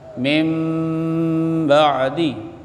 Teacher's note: Bunyi nun mati kepada bunyi mim. Jadi tidak dibaca min tapi dibaca mim ba'di. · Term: iqlab